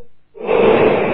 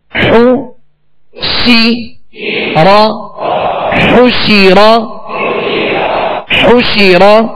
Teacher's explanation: شین کے نیچے زیر ہے، آواز کو گھرا کر، اور زبر را پر ہے تو آواز اور منہ دونوں کھول کر اس کو ادا کریں